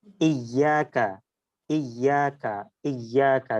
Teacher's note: জিভার মাঝখান দেখেন উপরের তালুর সাথে লাগছে